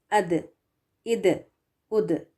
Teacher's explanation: یہ دال جب ساکن ہو کر آتا ہے تو پھر اس کی آواز جو ہے وہ باؤنس ہو کر آتی ہے. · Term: خلخلا